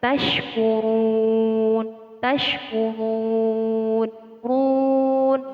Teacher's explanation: Terdapat ro dhammah di sini dibaca dengan tebal atau tafkhim.